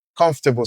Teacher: A syllable can be louder, longer, and clearer, while sometimes some syllables can only be louder and clearer as in com- in the word comfortable